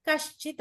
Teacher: విసర్గ ఉన్నప్పుడు విసర్గ కాస్త శకారంగా మారిపోతుంది